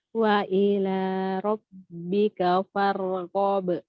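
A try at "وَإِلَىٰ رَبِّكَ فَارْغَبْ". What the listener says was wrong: Ko tebal. Robbika. Senyum. Mengalir farghob.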